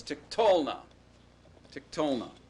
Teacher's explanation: n you just leave it and add the consonantal suffix now the accent stays away from that consonantal suffix just like it did in the perfect